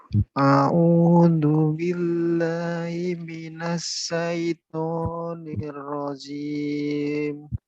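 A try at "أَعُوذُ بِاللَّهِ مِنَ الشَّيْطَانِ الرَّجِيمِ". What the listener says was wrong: Nah, itu masih perbedaan tempat keluarnya. A sudah benar, mau masih kurang. Nah, di lidahnya di ujung gigi, dua gigi. A'udzu billahi minasy syaithanir rajim. Nir, tasdid. Nir rajim. Nir rajim. Nah, minas, sin, ada sin yang kurang. Nah, minas, tebal ya. Minas syaitonir rajim. Rajim.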